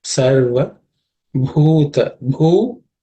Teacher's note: Sarva bhuta, bhu, this bhu is the fourth letter in the Pavarga, so it has the fourth letter is bha, which is aspirated